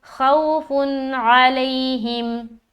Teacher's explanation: اب یہاں پر دیکھیں دو پیش کی تنوین، اس کے بعد حرف عین آ رہا ہے، تو یہاں پر ہم اظہار کریں گے، نون کی آواز کو ظاہر کرنا ہے اور آگے کو چل دینا ہے، یہاں پر رکاوٹ نہیں کرنی